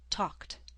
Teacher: a voiceless consonant at the end will make the ed ending sound like a t, talked.